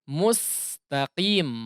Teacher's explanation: Setelah mim langsung ditarik biar supaya sinnya bisa sempurna dan tidak menjadi tebal ya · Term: huruf sin